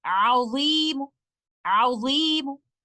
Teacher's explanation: I will recite letter meme with one dhamma by giving the 1/3 of the full length of the vowel count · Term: Rawm